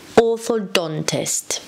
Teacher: The stress is on the D, orthodontist.